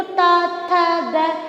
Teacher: दंता में। यानी जब हम इन वर्णों को बोलते हैं तो हमारा जो स्पर्श होता है जीभ का वो दंत से होता है।